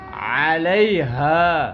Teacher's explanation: عین کی آواز, اوریجنل آواز گلے کے درمیان سے